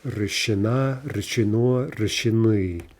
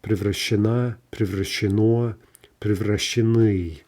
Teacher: The stress is always going to jump to the ending. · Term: shifting stress